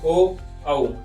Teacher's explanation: कंठ से उ और ओष्ठ से, कंठ और ओष्ठ मिला के हम लोग ओ औ बोलते हैं। जब हम लोग ओ औ बोलते हैं तो देखिएगा जो होंठ है हमारे वो गोल हो जाता है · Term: कंठोष्ठ